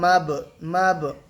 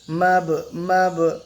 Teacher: বায়ে সাকিন আছে মানে বা কলকলা হবে